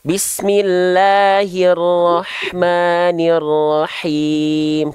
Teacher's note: Nah, yang itu bagus, cuman himnya kurang kuat. Ya, himnya dari tengah tenggorokan berbisik, H kecil